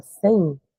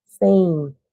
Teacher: Então esse M ele transforma o som em nasal e de quebra ainda coloca o som do I ali na palavra Então parece que eu tenho um e i nasal isso é · quando a gente fala sem, a gente puxa o som do I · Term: ditongo decrescente